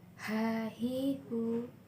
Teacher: Huruf ini dikeluarkan dari tengah tenggorokan ketika dilafalkan persis seperti kita melafalkan kata ayah.